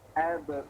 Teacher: Tipiskan abe, jangan abo. Tapi abe.